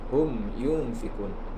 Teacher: mim sukun bertemu dengan ia, disebut dengan izhar syafawi. Izhar itu jelas, syafawi di bibir, jelas di bibir.